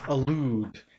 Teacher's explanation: So that second syllable has to be stressed.